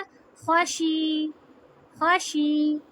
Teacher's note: खा ज़बर खा, शीन ज़ेर शी, या ज़बर या, ख़ाशिया। तो जब हम इसको वक्फ करेंगे तो शीन को या से मिला देंगे और या पे जज़म आ जाएगा